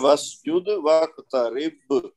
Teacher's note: با کو کلکلہ کبریٰ کرنا ہے تو زور دینا ہے کافی با پہ